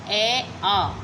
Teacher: इन दोनों का जो उच्चारण स्थान वो कंठ है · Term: सजातीय स्वर